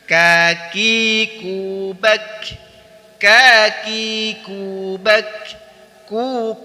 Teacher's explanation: Ucapkan dengan mengangkat pangkal lidah pada langit-langit bagian belakang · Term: huruf Kaf